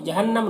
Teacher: नून मुशद्दद है, गुन्ना होगा और यहाँ पर वक़्फ़ करेंगे तो मीम का ज़बर सुकून से बदल जाएगा